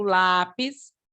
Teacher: é uma palavra paroxítona porque a sílaba tônica está na penúltima sílaba